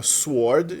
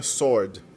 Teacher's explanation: é pronunciada como se o W não tivesse ali